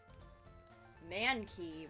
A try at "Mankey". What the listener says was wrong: Man, you're putting too much emphasis on you're putting the emphasis on the wrong syllables. Mankey, not Mankey. It's Mankey. Mankey.